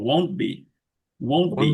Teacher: নেটিভরা এই ওয়ার্ড গুলো যখন কন্ট্রাক্টেড করে ফেলে একসাথে, যখন মানে মার্জ করে ফেলে, টিটা তারা রিলিজ করে না আর কি। ওন্ট, ওন্ট রিলিজ করার সুযোগ নেই তারা।